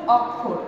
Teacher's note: অ যখন অ এর মতো ঠিক থাকবে তখন আমরা তাকে বলবো বিবৃত